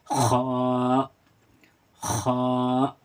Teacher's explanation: इसको हलक से अदा करते हैं और खा को मोटा पढ़ेंगे।